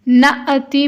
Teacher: نأتی میں حمزہ کی نون ساکن کے بعد حمزہ آیا ہے اور حمزہ ساکن ہوگا تو اس کو ہم جھٹکا دے کر پڑھیں گے